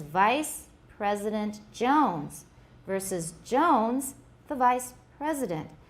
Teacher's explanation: The stress is on the first or the third syllable depending on the position of the other stresses in the sentence.